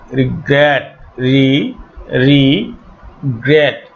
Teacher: এই শেষের অংশটাতে স্ট্রেস পড়ছে, অ্যাকসেন্ট পড়ছে, মানে জোর দেওয়া হচ্ছে।